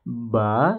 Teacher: Fala'allaka bakhi'un, ya, ba ini ada alif berdiri ya, ini mad tabi'i. Fathah bertemu dengan alif, ini adalah mad tabi'i, dua harokat